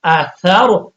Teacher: تو پہلے والا حرف سا تھا ہم نے دیکھا کہ اس کے اوپر زبر ہے تو اب را کو موٹا پڑھیں